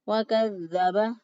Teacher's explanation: کاف کو باریک پڑھیں گے، واؤ کی ادائیگی میں ہونٹوں کو گول کریں گے. وَكَذَّبَ واؤ پر ہونٹوں کو گول کرتے ہوئے، کاف کو باریک، دال کو نرمی سے لیکن مضبوطی اور قوت سے اس لیے پڑھا کیونکہ اس کے اوپر شد ہے.